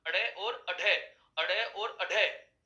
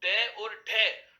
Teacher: लेकिन अड़े और अढ़े यदि बोला जाता है तो वो ताड़नजात वर्णों का उच्चारण माना जाता है।